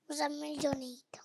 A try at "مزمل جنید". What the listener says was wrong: مزمل مزمل جنید ایسے بول. جنید یا مدہ کا قاعدہ لگا رہے ہیں آپ.